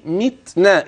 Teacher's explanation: وانتبه للتاء في قوله متنا الهمس يكون بلطف